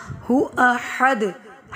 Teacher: ہو احد، ہا باریک پڑھا جائے گا، دال پہ کلکلا کریں گے، یعنی ہمیں ہماری آواز لوٹتی ہوئی محسوس ہوگی